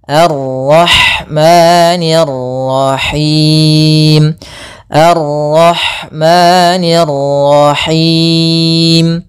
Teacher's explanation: maka di sini ada ra tafkhim pada lafal ar-rah